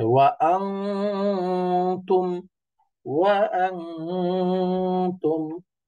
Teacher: আং অনুসারের উচ্চারণ করলে কিন্তু জিহ্বার আগা উপরের তালুর সাথে লাগে না। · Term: ইকফা